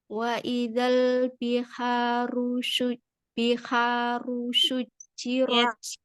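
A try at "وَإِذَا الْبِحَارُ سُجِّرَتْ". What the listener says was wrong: Hati-hati dengan sin, jangan jadi tebal. Biharu sujirat.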